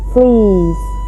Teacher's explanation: the lips may be either in a neutral position, or sometimes slightly spread, as for a high front vowel like e, fleece. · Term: unrounded